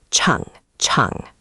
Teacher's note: watch that ch. It's a tongue-curled back sound. Chang, chang.